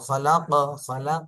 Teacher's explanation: কফে আরেকটু কলকলা করতে হবে